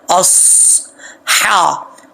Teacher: اس ہا، صاد کے بعد ہا ہے، باریک ہا، اس کا تعلق جو حلق منہ کی طرف ہے اس کے ساتھ ہے، تو اس کو باریک پڑھیں گے، بھاری ساؤنڈ کے ساتھ نہیں پڑھیں گے